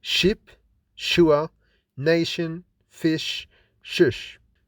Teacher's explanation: The soft palate is raised. Sh is unvoiced and fortis. · The blade of the tongue contacts the palato-alveolar slightly. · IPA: /ʃ/